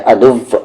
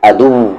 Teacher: वाव में lips round ही रहेगा।